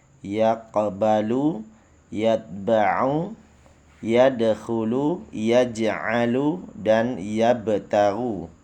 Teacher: Qalqalah dibagi dua, yaitu qalqalah sugro, yaitu pantulan suatu huruf lebih kecil karena huruf qalqalahnya itu mati asli berada di tengah-tengah